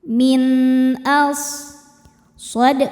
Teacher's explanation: Maka cara baca nun sukun ini adalah dibaca izhar atau jelas. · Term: izhar halqi